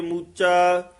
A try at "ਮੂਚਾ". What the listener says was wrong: ਹਾਂ, ਮੂਚਾ ਥੋੜਾ ਜਿਹਾ ਕੱਸ ਕੇ ਬੋਲਣਾ।